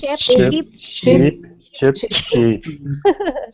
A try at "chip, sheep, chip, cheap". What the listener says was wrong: I heard a lot of chip, chip, chip, chip. Let's try this one at a time. So really with the, actually I want you to see my face when I pronounce these, okay?